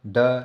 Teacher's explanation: द कम हवा निकली तो सघोष